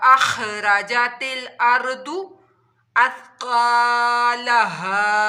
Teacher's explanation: खा हलक के ऊपर वाले हिस्से से अदा होगा और खा हरूफ मुस्तालिया यानी मोटा हरूफ भी है, इसको मोटे लहजे में भी पढ़ना है और हलक के ऊपर वाले हिस्से से अदा करना है।